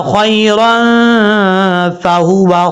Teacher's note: را کے اوپر جو دو زبر ہیں یہاں پر اخفا ہو رہا ہے، نون تنوین کا اخفا، ایک الف کی مقدار غنہ کریں گے کیونکہ دو زبر کی تنوین کے بعد فا آ رہا ہے